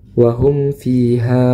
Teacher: huruf mim sukun bertemu dengan huruf fa maka diizharkan mim sukunnya